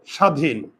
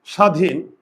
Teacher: প্রথমে যদি বফল থাকে ব এর উচ্চারণ হয় না আর উচ্চারণ লেখার সময় দন্তস কি হবে তালব্যস আর দীর্ঘ ইকার